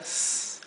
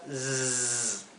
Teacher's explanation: Cuando la S no está entre 2 vocales, ya sea esté entre una vocal y una consonante, no creo que haya entre 2 consonantes, pero cuando no está entonces entre 2 vocales, siempre se pronuncia ss, la S suave, como la del español. Pero cuando está entre 2 vocales, se pronuncia zzz.